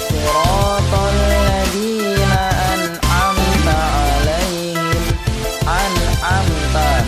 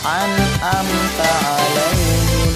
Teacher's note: Jadi nunnya yang disukun harus dibaca dengan jelas. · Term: idhar